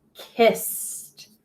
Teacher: That ED is making the T sound in the word kissed because that S at the end is unvoiced